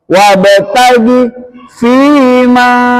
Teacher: Qalqalah. Jadi kalau ada ba mati itu tidak boleh dibaca wabagi, tapi harus nyantol.